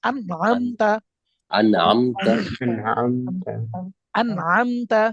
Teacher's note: ইজহার, তাহলে ইজহারের হরফ যদি আসে, আইন আসে, তাহলে নুন সাকিনকে কিভাবে পড়তে হবে? স্পষ্ট করে পড়তে হবে, এবং গুণা করা যাবে না।